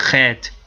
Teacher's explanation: Principalmente a professora da Universidade de Jerusalém, ela quando pronuncia o Het, ela pronuncia Het, de uma maneira bem gutural intensa